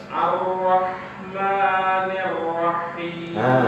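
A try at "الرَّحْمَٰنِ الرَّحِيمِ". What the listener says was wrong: Jadi kembali haknya tidak tasydid, ra-nya saja yang tasydid. Ar-Rahmanir-Rahim. Ngalir haknya.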